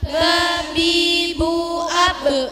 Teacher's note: bibir terbuka dengan suara yang ringan wa wi wu au ba dari di antara dua bibir dengan menutup lebih kuat